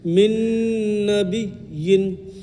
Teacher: نون میں ایک الف غنہ کریں گے